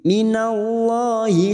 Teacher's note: lam jalalah yang sebelumnya fathah baca tafkim